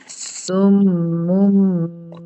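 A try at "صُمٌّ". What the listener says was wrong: Kurang dengungnya. Sum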